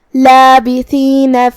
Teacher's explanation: کلمت لابثین میں یہاں حرف تھا ہے، تھا کو ہم زبان کے سر اور اوپر والے دانتوں کے اندرونی کناروں سے پڑھیں گے